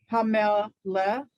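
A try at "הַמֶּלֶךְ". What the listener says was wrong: Hamela, exactly.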